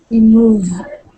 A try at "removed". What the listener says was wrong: So there's an ED there. So how are you going to pronounce that? Removed. So when you're reading, you just want to make sure that we can hear those sounds. Removed. It must have that past tense marker when you're speaking, because or else the people will not know that you are speaking in the past tense.